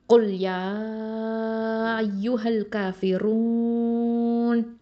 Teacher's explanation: இப்போ இதில் காஃப் துமா கு, அதாவது காஃப் அப்படிங்கிறது ஹெவி லெட்டர். இது அக்கசல் லிசான், அதாவது நாவினுடைய கடைசி பகுதியிலேருந்து வரக்கூடிய எழுத்து.